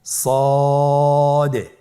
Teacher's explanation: মোটা হরফ উচ্চারণ ক্ষেত্রে মোটা করে পড়তে হবে এবং উচ্চারণ করার সময় তিন আলিফ টেনে পড়তে হবে · জিহ্বার আগা সামনের নিচের দুই দাঁতের পেট ও আগার সঙ্গে লাগিয়ে উচ্চারিত হয়।